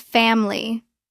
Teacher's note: It looks like familiable natural pronunciation. We often drop the middle I. It becomes family.